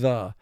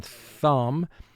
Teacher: the second sound for th which is also called the voiced sound where your vocal cords vibrate when you make the sound